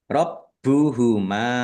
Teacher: baknya dibaca double, ada tasdidnya, ditekan dan ditahan biar tampak double.